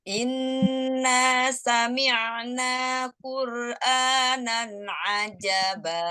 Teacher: Jangan ajaba, nggak enak kan? Jadi ajaba tetap naik lurus gitu.